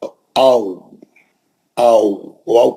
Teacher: एकदम नर्म आवाज एकदम और दूर मुंह से दूर जाके होठों से अदा होगा गोल होठ रहेंगे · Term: लीन